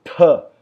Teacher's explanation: É o tatu com Mahaprana, com muito ar. Esse é o D de dado, D.